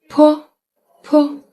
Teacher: it is aspirated, so you can press your lips together and then release with a burst of air, and your tongue is relaxed, resting on the bottom.